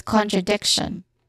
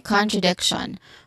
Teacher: So this is well, the start is con, which is a short o sound, and then followed by tra, which starts with a consonant cluster sound of t and r, then short a sound, then dek, then shon, tion, shon.